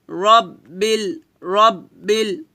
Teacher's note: রাব্বিল বলা যাবে না বলতে হবে র মোটা করে রব্বিল